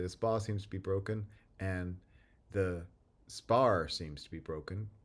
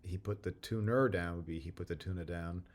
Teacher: in Boston English, which of course would have a lot of other differences in pronunciation, the contrast between the R final word and the word that doesn't have an underlying R is lost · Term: R deletion